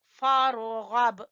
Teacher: रा को पुर और गैन को भी पुर, बा के ऊपर कलकला